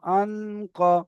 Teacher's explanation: আওয়াজকে নাকে তুলে এক আলিফ গুন্না করে পড়তে হবে। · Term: ইকফা